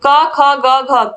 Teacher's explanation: क वर्ग में जितने भी वर्ण आते हैं सबका उच्चारण स्थान क्या है कंठ है